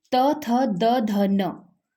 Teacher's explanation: जिनके उच्चारण में जीभ दांतों के पिछले भाग को छूती है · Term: दंत्य ध्वनियां